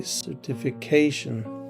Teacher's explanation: we have the stress on the penultimate position